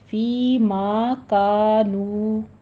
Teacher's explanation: سارے حروف مدہ ہیں، یا مدہ، الف مدہ اور واو مدہ آ رہے ہیں، ان کو 2 کاؤنٹ کرنا ہے